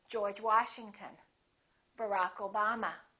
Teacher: We stress the last name, the second word.